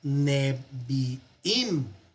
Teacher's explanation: El acento que estaba en su lugar se mueve al final.